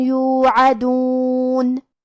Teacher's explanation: کلمت یوعدون میں حرف العین کو ہم حلق کے درمیان والے حصے سے پڑھیں گے، آخر میں نون پہ رکیں گے تو اس پہ جزم سے رکیں گے لہذا ہمیں نون کو ظاہر کرنا ہے۔